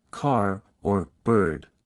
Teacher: the R sound is pronounced clearly in all positions. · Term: rodic